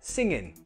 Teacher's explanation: The second ing you can contract to an in